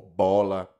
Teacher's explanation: sons que os lábios se encostam, bilabial